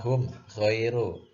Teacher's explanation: tidak ada dengungnya sama sekali dibaca jelas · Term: izhar syafawi